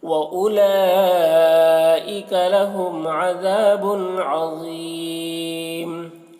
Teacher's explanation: वउलाइका में वाव को नहीं पढ़ा जाएगा और यहाँ पर मद है, इस मद को मद्द मुत्तसिल कहते हैं। · लहुम में मीम में इज़हार शफ़वी हो रहा है।